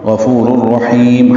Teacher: دیں گے، عارضی وقف ہے تو مد عارض للسکون، غفور الرحیم، ہا کو لمبا کریں گے اور میم پہ ہونٹ بند کر لیں گے، اظہار شفوی ہو جائے گا وقفاً